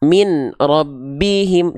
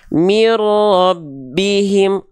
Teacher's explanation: idgham bila gunnah dibaca lebur, 0 harokat, gak perlu ditahan.